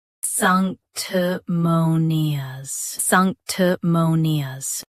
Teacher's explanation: Both US and UK have the same pronunciation of this word. Stress mo. Keep sank and t crisp, then nias smooth.